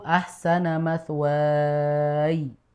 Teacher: I-nya sudah tidak usah dipanjangkan lagi.